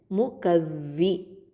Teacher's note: நுனி நாவு மேல் பற்களுக்கு கீழே வச்சு சொல்லணும்